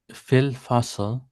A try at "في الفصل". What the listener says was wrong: في الفصل, the kasra is missing.